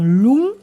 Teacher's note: la prononciation actuelle est bien Lung, avec un N vélaire